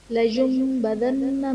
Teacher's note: کلا لینبذن فی الحطمہ، لینبذن میں نون ساکن کے بعد حرف با ہے، یہاں پر نون ساکن کو ہم میم سے بدل کر اخفا کریں گے، یعنی غنہ کر کے پڑھیں گے۔ نون مشدد ہے تو نون مشدد میں غنہ ہوگا